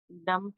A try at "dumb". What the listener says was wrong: डम बोलते, डम, बी साइलेंट। लिखा ना मैंने, डम, DUMB। डम एंड डेफ।